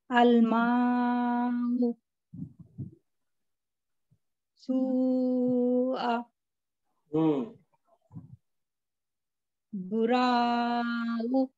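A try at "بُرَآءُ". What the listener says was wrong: नहीं, बुरा अलग है, फिर हमजा पे खड़ा जबर अलग है ना, इसको खींचना है हमको, हमजा को खींचना है।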